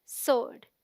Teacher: the W is silent, so it sounds like sword, as in Lord. So the right pronunciation is sword.